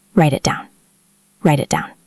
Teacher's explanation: So the full phrase is write it down. The first T flows. The second T stops.